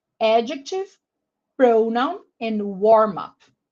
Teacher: So these 3 words that are frequently said in class by teachers all have the stress on the first syllable